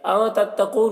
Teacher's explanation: نون ساکن کے بعد حروف اخفا میں سے تا ہے، نون میں اخفا کر کے پڑھیں گے۔